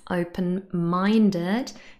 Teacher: open-minded has the stress on the third syllable